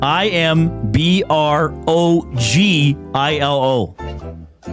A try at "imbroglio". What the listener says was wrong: Imbroglio. I think the first time you said ILO, but I'm giving you the correct LIO.